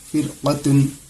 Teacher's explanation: یہاں پر آپ دیکھیں گے رائے ساکنہ سے پہلے زیر آ رہا ہے لیکن رائے ساکنہ کے بعد قاف ہے جو حروف مستعلیہ میں سے ہے، اسی لیے اس کو موٹی آواز کے ساتھ پڑھیں گے